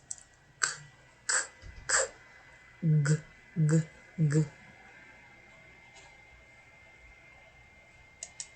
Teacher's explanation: You form this sound by putting the back part of your tongue against the soft palatal. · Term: velars